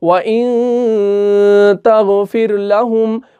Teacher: کیونکہ نون ساکن کے بعد تا آ رہا ہے، اس لیے ہم یہاں پہ اس کو ظاہر نہیں کر رہے بلکہ گنہ کر رہے ہیں، بلکہ ہم اخفا کر رہے ہیں، بلکہ ہم چھپا رہے ہیں۔ ہم نون کو نہیں پڑھ رہے، ہم اس کو چھپا رہے ہیں۔